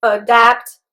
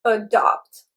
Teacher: There is only a difference in the second syllable's vowels.